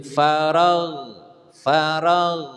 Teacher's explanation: ditahan jangan sampai ada Qalqalah